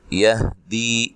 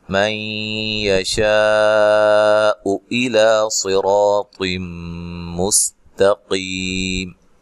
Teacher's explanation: نون ساکن کا یہاں ادغام مع الغنہ ہے اور شین پہ جو مد ہے یہ مد واجب ہے